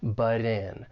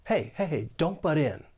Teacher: Something I want to say about the pronunciation of this phrase, and this is more related to the American accent because I am from the US, and that is that T sound in but, that double consonant T. Because it comes between 2 vowel sounds, I am going to say this as a flap T, and it's going to sound more like a soft D, butt in. And then we can link that flap T with the vowel sound in.